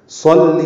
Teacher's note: صاد پر پڑھیں گے، لام سے ملائیں گے، لام کو جلدی پڑھنا ہے